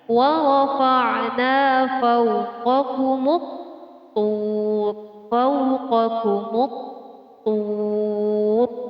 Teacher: Terdapat hukum bacaan alif lam syamsiyah yang ditandai dengan harokat tasydid. Jadi alif lam di sini tidak terbaca lagi